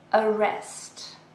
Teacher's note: It has 2 syllables and we stress the second one.